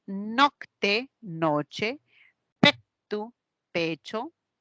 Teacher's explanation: esta Che se conoce a nivel fonológico con su definición una africada palatal ya una africada palatal decimos Note noche tu pecho se dio